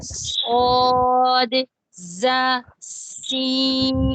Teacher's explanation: رأس اللسان جب ثنایا سفلا کی جڑ سے لگے تو پھر صاد، ز، سین، یہ 3 حروف نکلتے ہیں